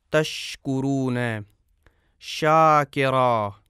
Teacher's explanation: شین کی ادائیگی میں اس کا مخرج بند نہیں ہوتا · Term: مخرج شین